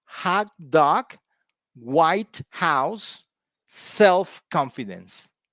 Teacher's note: these words have stress on the first part because they are nouns they are compound nouns